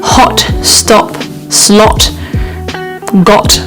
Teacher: this is a very round shape with the mouth with the lips slightly pushing out and the tongue just slightly relaxed and flattened in the mouth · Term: short o sound